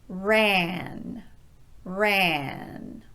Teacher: On the first word, ran, the middle of my tongue is raising up and pushing forward. Ah. It's not staying low in my mouth, which would be ah.